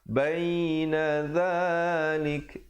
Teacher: Baina dzalik, dan pilih kalau untuk waqaf di situ pastikan ada bunyi anginnya, lik itu ya, hamasnya.